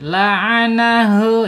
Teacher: H-nya ada di tenggorokan bawah ya